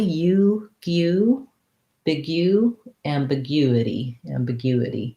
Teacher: we do need that that u that glide ya sound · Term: glide y sound